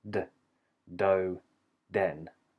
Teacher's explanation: for the D it's voiced there's a sudden release of vibration